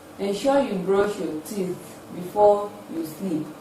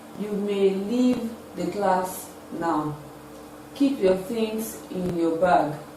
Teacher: We use the falling tone to express imperative statements.